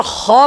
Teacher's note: خا الف زبر خا پڑھتے ہیں، الف بھی موٹا پڑھا جا رہا ہے